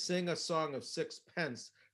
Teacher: the p being this strong plosive